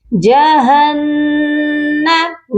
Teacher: هذه، ہا کے نیچے کھڑی زیر ہے اور اس والی ہا کے اوپر کھڑی زبر ہے، دونوں ہا کو ہم ایک ایک الف کی مقدار لمبا کر کے پڑھیں گے۔ جہنم، نون مشدد ہے، یہاں پر غنہ کریں گے